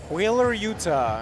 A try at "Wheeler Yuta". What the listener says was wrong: It's not like the state. It's Utah. Utah, not Utah.